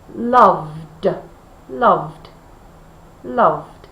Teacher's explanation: oh there's definitely a vibration there so we know we need to use the d sound